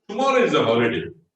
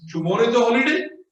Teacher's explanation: the falling intonation is there, it is a statement. The rising intonation is there, it is a question.